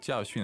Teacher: that's two fourth tones